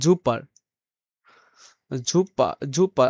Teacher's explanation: জার্মানরা শব্দের শুরুতে এস থাকলে তা অনেকটা জয়ের মতো উচ্চারণ করে।